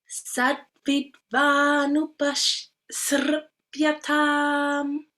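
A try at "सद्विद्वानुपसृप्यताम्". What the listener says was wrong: Good, very good. So you notice that here is tricky, right?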